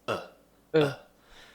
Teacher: mouth is relaxed tongue is relaxed in the middle of the mouth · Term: schwa sound